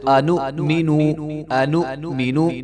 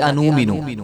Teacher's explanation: تو ہم پہلے بھی پڑھ چکے ہیں کہ جب حمزہ کے اوپر جزم آتی ہے تو اس کو جھٹکے کے ساتھ پڑھا جاتا ہے